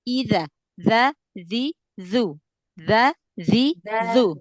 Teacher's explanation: digesekin sedikit ya makhrajnya ya. Jadi bukan cuman ditempel aja ya. Karena kan huruf dalal dia punya sifat ee rakaah ya dialirkan suaranya bukan punya sifat syiddah kan.